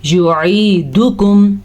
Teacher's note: ثم میم پہ غنہ کرنا ہے. یعیدکم, دال کو کھینچ کے نہیں پڑھنا, دال کو دال پیش دو اتنا ہی پڑھنا ہے. اگر کوئی اس کو پڑھے گا یعیدوکم تو وہ ایک بہت بڑی غلطی کرے گا, ٹھیک ہے.